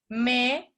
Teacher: la M, como es bilabial, ¿cierto? Es sonora como la B, ¿sí? Pero sale el aire por la nariz, un poquito, cosa que no ocurre cuando dices P o B. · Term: nasal